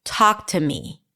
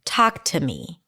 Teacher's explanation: Talk is the primary stress here.